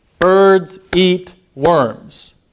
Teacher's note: with this sentence birds and eat and worms those are the stressed syllables those are emphasized